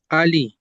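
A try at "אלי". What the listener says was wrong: Eli, bukan Ali, Eli.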